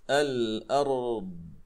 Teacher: نعطي الراء حقها ونعطي الضاد حقها من الاستطالة